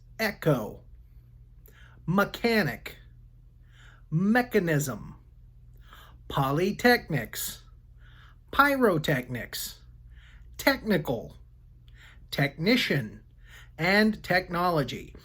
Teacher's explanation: welcome to phonics ech sounds in many cases the letters e c h together sound like the short e followed by a k sound